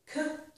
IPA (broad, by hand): k